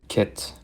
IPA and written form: kɪt (KIT)